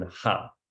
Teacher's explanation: if you say an R in a Danish word at the end or after an A, all the R does here is to open up to say ah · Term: open A vowel sound